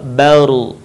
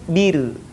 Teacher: sebelum huruf ra yang mati berharokat fathah dhammah, maka suaranya terdengar menebal, baru. Tapi kalau sebelumnya kasrah, maka terdengar tipis, bir. Perhatikan contoh berikut.